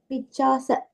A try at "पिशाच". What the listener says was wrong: You're saying Picha, you're saying it's Pisha. Pishacha.